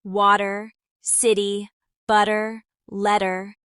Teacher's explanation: feel how the T turns into a softer sound without completely disappearing. This is one of the most common features of American English.